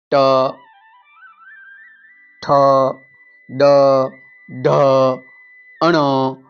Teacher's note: ટ ઠ ડ ઢ ણ આ બધા મૂર્ધા માંથી બોલાય છે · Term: મૂર્ધન્ય